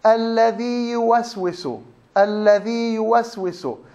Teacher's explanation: الياء المادية الأولى لا تضغم في الياء المتحركة، فهي تظهر وبعدين بنمدها بمقدار حركتين لأنه فيها مد طبيعي